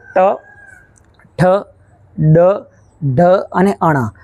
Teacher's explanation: તો તમારી જે જીભ જે છે આ જીભનો જે આગળનો ભાગ છે તે તાળવામાં પાછળની બાજુ સ્પર્શ કરે છે, એટલે કે તેના મૂળને અડે છે. એટલા માટે આ જે અક્ષરો જે છે, આ જે વ્યંજનો છે તેને મૂર્ધન્ય વ્યંજનો તરીકે ઓળખવામાં આવે છે. · તો આ ટ, ઠ, ડ, ઢ અને અણ તેને બોલતી વખતે તમારી જીભ જે છે તાળવામાં પાછળના ભાગે થોડી વળે છે અને પછી અડે છે